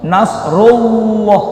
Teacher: Lafal Allah sebelumnya dhammah. Itu tafkhim, artinya tebal.